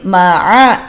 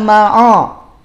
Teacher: ain jangan ketarik jadi tebal.